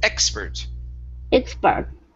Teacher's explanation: our stress is at the very beginning